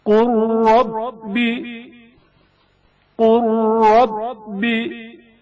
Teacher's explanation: لام ساکن کا رائے متحرک میں ادغام